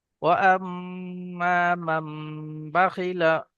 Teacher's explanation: নুনটাকে মিমের দ্বারাই পরিবর্তন করে এক আলিফ পরিমাণ গুণনা করে পড়তে হয়, একে ইখলাব বলা হয়। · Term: ইকলাব